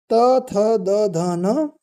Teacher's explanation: त थ द ध न ये हो जाएगी हमारी दंत वाली ध्वनि